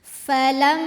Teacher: Dengungannya bunyi M yang kita tahan sampai suaranya masuk hidung. Kurang lebih 2, 3 atau 4 harokat ya.